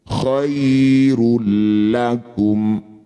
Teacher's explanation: Bunyi dumah tanwin masuk pada lam tidak usah dengung. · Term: idgham bila ghunah, idgham bila gunnah